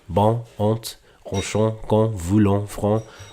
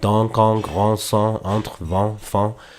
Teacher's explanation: you're relaxing a thing called the velum in the back of the mouth, allowing the air to pass through both channels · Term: nasal vowel